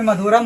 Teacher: last में जब अंश स्वर रहता है तो उसका ध्वनि म निकलता है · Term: अनुस्वार